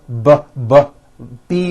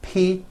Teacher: B voicing ppbb you see that everything here stays the same the only difference is my vocal cords are either vibrating or they're not vibrating